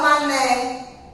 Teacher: Terminou com E, mas não tem som de I. Não é mani.